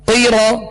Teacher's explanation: قاف زیر قی را زبر رو قیرا. قاف کو پر پڑھیں گے، 2 نقطے والا قاف ہے اور یہ حروف مستعلیہ میں سے. را کو پر پڑھیں گے، را پر زبر ہے اس لیے را پر زبر پیش 2 زبر 2 پیش ہو تو را کو پر پڑھیں گے.